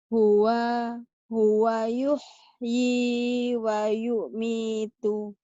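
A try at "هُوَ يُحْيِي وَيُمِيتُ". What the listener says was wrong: Wa yumitu jangan wa yumi, tuh jangan diputus.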